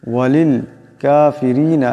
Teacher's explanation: রা নিচে জের আছে, আওয়াজটাকে পাতলা করিয়া পড়তে হবে